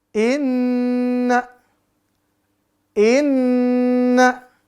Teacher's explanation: Terus satu kedua, huruf nun, kita bacakan inna. Inna, ya, kita bacakan seperti itu, didengungkan 2-3 harokat.